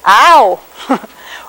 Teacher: So your tongue starts in an ah position and then is raised to an oo position. It does all within one syllable. So you go ow. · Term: diphthong